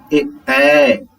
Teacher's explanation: अब है कंठ तथा तालु, मान दोनों का प्रयोग, जैसे ए कंठ भी हुआ, कंठ के नीचे से भी ध्वनि निकल रही है, और तालु जीभ ऊपर भी सट रहा है